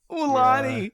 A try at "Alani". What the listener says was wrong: Who says it like that? Come on. It's Alani, not Ulan.